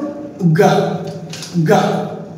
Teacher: জিহ্বার back part will touch at the ভ্যালাম অর্থাৎ আমাদের soft ভ্যালামটি touch করবে অর্থাৎ নরম তালুতে টাচ করবে আর 1 সেকেন্ড যাবত বাতাস আটকে থাকবে তারপর ভোকাল কর্ড কম্পিত